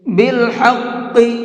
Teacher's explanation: ہا کو حلق سے نکال کر کے پڑھیں گے اور قاف کو پر کر کے پڑھیں گے